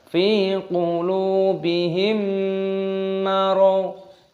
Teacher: di sini ada mim sukun yang bertemu dengan mim, idgham mimi, ini didengungkan